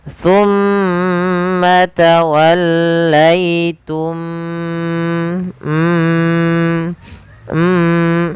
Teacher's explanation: adalah bacaan terjadi ketika mim mati bertemu dengan mim cara membacanya masukkan mim yang pertama kepada mim yang kedua dan ditahan suara mimnya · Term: Idgham Mimi